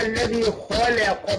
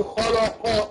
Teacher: الخاء مفخمة. أما اللام مرققة، احنا قلنا اللام لفظ الجلالة بس اللي طرة تفخم وطرة ترقق، أما اللام أي لام تانية لا، مرققة قولة واحدة.